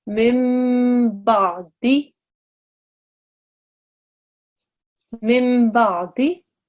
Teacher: you have to ignore the nun and you read it as if it's a meme sakin. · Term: meme makluba